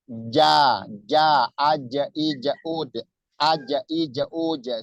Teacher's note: pertemuan dari tengah-tengah lidah ke langit-langit atas